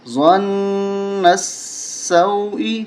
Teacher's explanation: حمزہ زیر ای، ظن السوء، یہاں نون کے اوپر تشدید ہے، اس نون کے اوپر غنہ کریں گے اور نون کو پھر سین کے ساتھ ملائیں گے